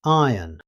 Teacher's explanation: The R is not pronounced because it comes before a consonant sound.